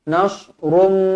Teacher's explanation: وَأُخْرَى تُحِبُّونَهَا نَصْرٌ مِّنَ اللَّهِ وَفَتْحٌ قَرِيبٌ وَبَشِّرِ الْمُؤْمِنِينَ وَأُخْرَى تُحِبُّونَهَا نَصْرٌ مِّن tanwin 99 bertemu dengan mim idgham ma'al ghunnah. Nasrum dengung dua harakat.